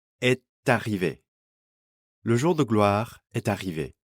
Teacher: so the final T of est is pronounced before arrivé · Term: liaison